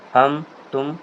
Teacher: پہلا ہے اظہار صفوی، میم ساکین کے بعد اور میم کے علاوہ وہ کوئی اور حرف بالخصوص واو یا فا آئے تو میم کو ظاہر کر کے پڑھنا چاہیے، جیسے اردو میں ہم تم کے میم کو، جسے ہم اردو میں ہم تم کرتے ہیں اور اس میں غنہ نہیں آتا، ناک میں آواز نہیں کرتے ہیں